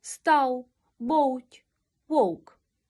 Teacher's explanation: вимовляємо за допомогою губ і зубів а отже він губно зубний в перед приголосним та у кінці слова він переходить у нескладовий голосний у